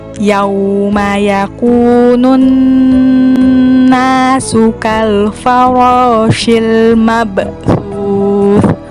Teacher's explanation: Kalau huruf ba itu diakhiri dengan huruf e, tidak boleh diakhiri dengan huruf o. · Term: qalqalah sugro